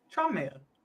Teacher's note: the N and the M kind of blur into one